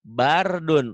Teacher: Karena sebelum roh mati berbaris di atas, maka rohnya dibaca Tebal. tebel atau disebut juga Tah. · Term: Tafkhim